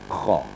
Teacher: Kha-nya harus punya getaran. Ya, huruf halak kita ada getaran kha di bawah, di pangkal lidah bagian dalam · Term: huruf kha